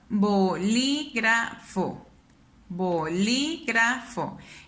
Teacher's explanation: Entonces yo me doy cuenta que esta es la última sílaba, penúltima sílaba, antepenúltima sílaba, antes de la antepenúltima. ¿Dónde suena más mi voz? En li. Me doy cuenta entonces que es una palabra esdrújula porque está en la antepenúltima sílaba.